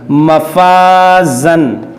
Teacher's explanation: الف سے پہلے فا جو ہے باریک حرف ہے, تو اس الف کو باریک پڑھیں گے